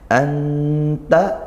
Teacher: dibaca samar bainal izhar wal idgham, di antara izhar dan idgham, tidak masuk langsung ke ta, tidak juga dibaca jelas nunnya, dan disertai dengan dengung ketika ikhfa, seperti itu. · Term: ikhfa haqiqi